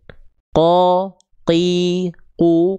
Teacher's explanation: qof dia tidak mengalirkan nafas sedikit pun. Qo qi qu. Karena pangkal lidahnya nempel ke langit-langit yang paling dalam, langit-langit yang lunak. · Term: qaf